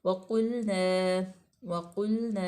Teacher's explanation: वाव जो है वो हरूफ़े मतलब शफ़वी है और वाव मफ़तूह है। क़ाफ को पुर पढ़ा जाएगा। लाम जो है वो साकिन है, तो ये वैसे बारीक पढ़ी जाएगी।